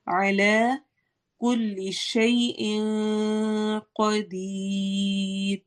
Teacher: را کو ہم باریک ہی پڑھیں گے کیونکہ را سے پہلے یا ساکن آ گیا ہے